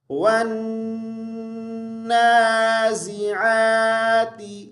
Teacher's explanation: آگے دیکھیں، یہاں پہ واو کو نون کے ساتھ ملائیں گے شد کی وجہ سے، اور یہاں پر دیکھیں عین کو ہم نے حمزہ نہیں پڑھنا، ٹھیک ہے، عین کو اچھے سے ادا کریں گے